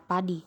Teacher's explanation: vokal tinggi atas depan tak bundar